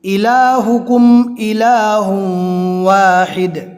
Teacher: اب حمزہ میم اور با کے علاوہ 26 حروف میں سے ہے۔ اب یہاں پر اظہار ہوگا یعنی میم ساکین کو بالکل ظاہر کر کے پڑھیں گے۔